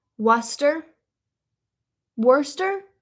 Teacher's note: Well, you guys would say Worester because you guys don't really pronounce the R